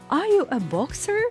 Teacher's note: the tone of my voice rose in this situation because I know the answer I just want to check if I heard well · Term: rising tone